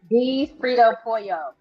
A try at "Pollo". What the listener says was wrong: But it's not Pollo. You said it's Pojo.